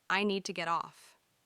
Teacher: The D sound and T sound blend together. Need to. It almost sounds like needa.